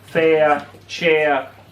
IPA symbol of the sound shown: ãῖr